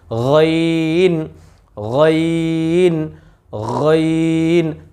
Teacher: এই আইনের উপর যদি একটা নোক্তা দিয়ে দিই হয়ে যাবে গাইন। এই যে খর যে মাখরাজ রয়েছে হলকের শেষ, সেখান থেকে আমরা উচ্চারণ করব